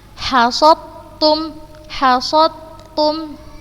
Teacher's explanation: Huruf pertama langsung dimasukkan ke huruf yang kedua dan dibacanya tanpa gunnah. Kita lihat di sini huruf dal sukun bertemu dengan huruf ta yang berharokat. · Langsung Ustazah masukkan ke huruf yang kedua yang berharokat dan Ustazah bacanya tanpa gunnah. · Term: idgham mutajannisain